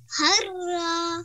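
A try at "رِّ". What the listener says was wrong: No, ra. No, no, no, no. It is shadda and kasra, and we start with ra.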